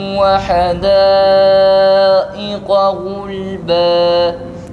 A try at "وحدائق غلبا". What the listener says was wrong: وحدائق همزة uzatma. İq akıcı bir sesle söyle.